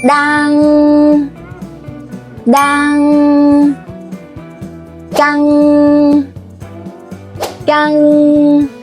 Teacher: Notice how the sound flow out smoothly through your nose with your tongue toward the back of your mouth. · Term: NG sound